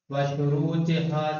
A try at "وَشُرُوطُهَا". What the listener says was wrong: شروطہا کیوں پڑھ دیا آپ نے؟ زیر کہاں سے آیا وہاں؟ شروطہا کیوں پڑھا؟ وشروطہا